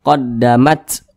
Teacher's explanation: ketika membunyikan huruf ta sukun, ada desisan angin yang keluar daripada mulut kita, karena huruf ta ini memiliki sifat hamas